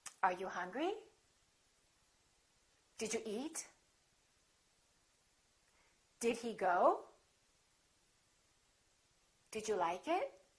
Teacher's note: Now, let's practice some questions which are yes-no questions. Remember, intonation goes up.